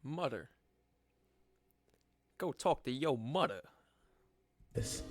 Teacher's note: dropping the th sounds in words